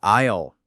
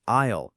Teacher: Notice listeners, no S sound there. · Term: silent S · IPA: /aɪl/